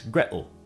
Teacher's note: the T in water, as well as the T in Gretel, is generally pronounced as a glottal stop in Cockney English